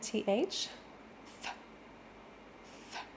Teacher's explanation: the classic English th where the tongue is coming through the teeth and then it pulls back in